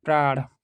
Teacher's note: ऐसी अवस्था में उच्चारण का तरीका यह होना चाहिए कि पहली ध्वनि का उच्चारण प्रारंभ करते समय ही दूसरी ध्वनि के लिए भी तत्संबंध अवयव को तैयार रखें, ताकि दोनों का उच्चारण पूर्वापर संबंध रहित एक साथ हो जाए। जैसे प्राण में प्र के उच्चारण के लिए जब ओठ प के लिए मिले, उसी समय र कहने के लिए भी तैयार रहना चाहिए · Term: संयुक्त ध्वनि